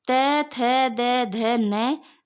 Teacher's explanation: त वर्ग हमारा कहां से बोल रहा है तो वह हमारा दंत से बोल रहा है